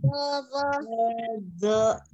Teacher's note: ujung lidah ada di ujung gigi seri bagian atas, ujung lidahnya keluar sedikit